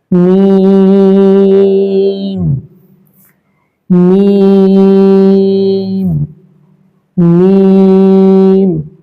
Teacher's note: মিম হরফটা 2 ঠোঁটের শুকনো জায়গা থেকে উচ্চারিত হবে এবং এটা 3 আলিফ টান দিয়ে পড়তে হবে।